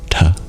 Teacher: tongue against the hard pallet just behind your teeth T and you'll notice there's an H there as well and that indicates that it's aspirated so it's a hard but with extra [Music] breath and I · Instead of touching your tongue to your teeth to make the sound ta, you curl it back and you flick the bottom of the tip of your tongue against your hard palate